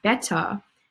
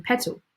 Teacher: So when we say words like, for example, better, our vocal folds are already vibrating because of these vowel sounds of E that surround the T, or these vowel sounds of E and A that surround the T in petal. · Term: weak T